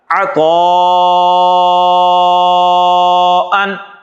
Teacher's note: تو جب شرط پوری ہو رہی ہے تو یہاں پر پھر مد پیدا ہو جائے گی جس کو ہم بڑی مد کہتے ہیں اور اس کو لمبا کر کے پڑھا جائے گا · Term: مد متصل